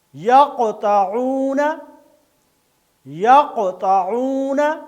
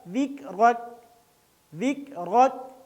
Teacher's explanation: قوف موٹا اور ہلا کر قلقلہ کے ساتھ پڑھا جائے گا